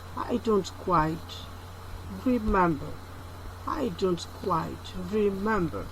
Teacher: The full rise intonation tone are signaled by these arrows, one falling, another rising. The voice falls and rises usually within one word.